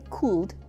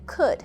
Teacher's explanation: When you say could, the L is silent.